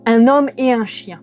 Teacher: Premier cas, la conjonction et. Vous ne pouvez pas faire de liaison avec et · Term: liaisons interdites